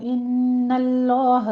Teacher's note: ان اللہ اصطفا کی نون پر غنہ واجبہ کریں گے ، غنہ واجبہ ہوگا یہاں پہ، نون مشدد ہے، 2 کاؤنٹ